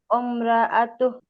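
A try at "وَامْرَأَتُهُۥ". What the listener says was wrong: ওমরা হবে না, ওয়াওটা মিমকে ধরবে, ওয়াও মিম জবর ওয়াম হবে, অম হবে না। ওয়াম, ওয়াম র আ তু, ওয়াম র আ তু।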